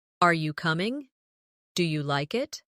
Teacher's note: Another important element is intonation when asking questions. In English, our voice usually rises at the end of a yes or no question. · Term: rising tone